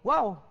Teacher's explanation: huruf dua bibir juga, tapi dia tidak bertemu bibir ni. Cuma dia ni dia muncung. Dia bulat.